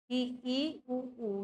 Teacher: इसमें मुंह लगभग लगभग बंद रहता है। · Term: संवृत